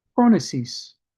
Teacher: The P would have been a breathy P, and I think the O would have got the accent.